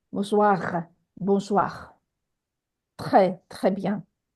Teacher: unlike English, where this letter R is from the front of the mouth, in French, it comes from the back of the throat, like a soft growl.